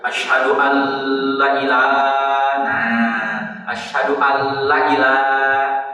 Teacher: Dengan kata asyhadu alla ilaha berarti la-nya tidak panjang. Kalau la-nya tidak panjang itu nanti bisa menjadi lam taukid, artinya la ilaha.